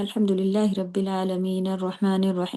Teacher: مد عارض للسکون، رکتے وقت والے، کہ آپ الحمدللہ رب العالمین اتنا بڑا نہ کریں، 2 کاؤنٹ ہی رکھیں ، عالمین فاسٹ ہو جائے گا آپ کا،